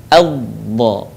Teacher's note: huruf ini keluar dengan menyentuhkan dua sisi lisan kita dengan geraham-geraham atas